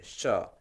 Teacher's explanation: तालू से जो आएगा वो श होगा, तालू से श।